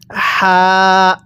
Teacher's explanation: আমি কিন্তু হা টা উচ্চারণের সময় মুখ দিয়ে হালকা বাতাস বের করছি